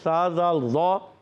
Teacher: زبان کا سرا اوپر کے دانتوں کے اندرونی کنارے لگیں گے تو سا، زال، ضو